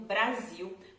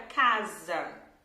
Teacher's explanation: mas o som, a pronúncia dessa letra S, é um som de /z/